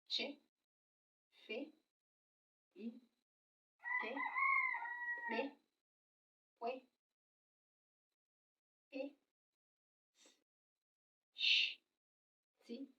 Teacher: These sounds are the ones that when you are pronouncing it out, the vocal cord will be wide open. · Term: Ụda ogbu